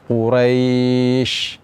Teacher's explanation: Kemudian ketika kita berhenti pada huruf shin, ya, huruf shin ini makhrajnya adalah di tengah lidah. Dan di antara sifat daripada huruf shin ini, ketika kita ucapkan dia keluar angin.